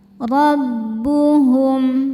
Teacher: Ro dibaca tafkhim karena harakatnya fathah. Cara bacanya ro dibaca tebal.